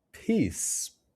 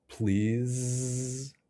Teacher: The voicing is the only difference. Your mouth, tongue, and jaw positions are exactly the same.